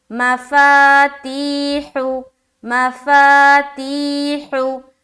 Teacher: माँ को नहीं खींचा, हु को भी नहीं खींचा, फा और ती में खींचना है।